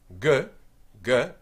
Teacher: the back of your tongue is touching your soft pallet at the back and there's vibration